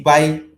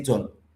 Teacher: For example, if you say by, that's rising, but if you say John, John is falling.